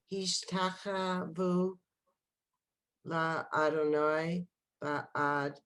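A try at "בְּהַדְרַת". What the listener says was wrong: No, be, had, had. You have to hear that dalit. Behad, rat.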